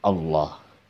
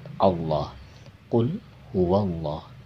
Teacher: tebalnya lafad lam ini dengan mengangkat pangkal lidah kita jadi membuat surat kita tebal Allah bukan Allah bukan menyenangkan lidah